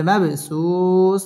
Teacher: হবে র মদ তাবাই একালিফ টেনে পড়তে হবে কাল ফারাশিল মাব বা কলকলার হরফ ধাক্কা দিয়ে পড়তে হবে